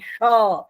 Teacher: છે મૂર્ધન્ય શ બોલવો હોય ફાળિયો શ બોલો હોય તો આ જીભને કમાન વાળી અને ઉપરની મુર્ધા આ તાળવાની ટોચ છે ને મૂર્ધા એટલે ટોચ એને અડાડીને બોલાય